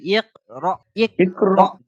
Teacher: এই হামজা, হ্যাঁ, ওই হামজাটার উপরে এই সাকিনটা এসছে, তাই ওটা টান হবে না, ঝাটকা দিয়ে পড়তে হবে। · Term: হামজা সাকিন